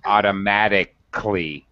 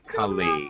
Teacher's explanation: Very often with these adverbs with C-A-L-L-Y, usually we drop the syllable like this, automatically. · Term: drop syllable